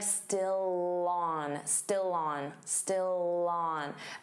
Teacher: Notice how still and on link together. And you'll hear that L sound on on. So it will sound like still on.